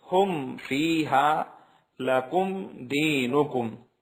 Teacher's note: Number 1، میم ساکن کے بعد میم اور با کے علاوہ کوئی بھی حرف آ جائے تو وہاں پر اظہار ہوگا، یعنی میم کے بعد والے حرف کے ساتھ جب ملایا جائے گا تو بالکل صاف طریقے سے پڑھا جائے گا، ناک میں آواز نہیں جائے گی۔